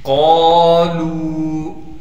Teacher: قالوا، قاف کے بعد الف مدہ ہونے کی وجہ سے قاف کو ایک الف کی مقدار کھینچیں گے، لام کے بعد بھی واو مدہ ہونے کی وجہ سے لام کو بھی ایک الف کی مقدار کھینچیں گے